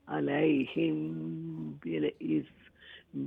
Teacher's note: میم ساکن کے بعد با ہے تو اخفا بھی ہے, اخفا غنہ